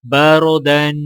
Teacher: را سے پہلے زبر آ رہا ہے تو لہٰذا را کو موٹا پڑھا جائے گا اور دال کے اوپر دو زبر ہیں اور الف ساکن اس کے آگے ہے تو لہٰذا وقف کرتے وقت دال کو الف کے ساتھ ملائیں گے اور ایک الف کے برابر کھینچیں گے.